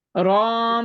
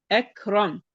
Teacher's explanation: آپ را کا فتحہ کو تھوڑا لمبا کرتی ہیں